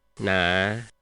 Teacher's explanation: It falls and then goes back up. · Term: low falling raising